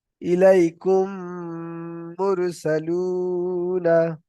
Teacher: ইদগামে সাফাবি হচ্ছে মিম সাকিনের পরে যদি মিম আসে, তাহলে মিমকে মিমের সাথে মিলিয়ে এক আলিফ পরিমাণ গুণনা করে পড়তে হয়, একে বলা হয় ইদগামে সাফাবি।